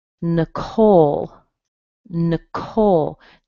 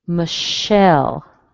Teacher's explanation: you'll probably hear a schwa instead of the vowel sound at the beginning, and then you'll hear a nice strong sound at the end